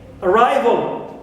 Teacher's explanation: Al, like in arrival. We don't here stress vol because it is neutral, al, but we stress arrive as usual.